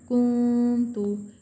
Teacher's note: ہم نون کو نرم گننے کے ساتھ ناک میں آواز چھپا کر پڑھیں گے۔ اس اصول کو اخفاء حقیقی کہیں گے۔